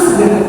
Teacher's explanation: A pada kata segar sering diganti dengan vokal E, seperti pada video, menggunakan kata seger yang seharusnya kata segar.